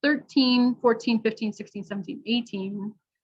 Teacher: the second syllable is usually stressed so we're going to say the vowel and the consonant very clearly